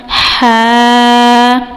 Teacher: یہ وسط حلق سے حرف ادا ہوگا